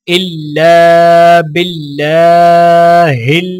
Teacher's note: لام کو الف کے ساتھ ملاتے ہوئے ایک الف کے برابر کھینچیں گے. اللہ کے لام کو باریک پڑھا جائے گا اور لام کے اوپر کھڑا زبر ہونے کی وجہ سے ایک الف کے برابر کھینچ کر پڑھا جائے گا.